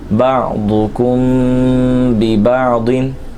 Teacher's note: میم ساکن میں غنہ کریں گے اخفاء شفوی کا